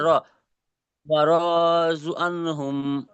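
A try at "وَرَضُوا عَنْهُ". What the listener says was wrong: এখানে দেখুন, আপনি এক জায়গায় টান দিয়ে ফেলেছেন, অরজু পড়েছেন। র টান হবে না, কারণ র এর উপরে কি আছে, হারাকাত এসছে না, জদা পেশ, জু টান হবে।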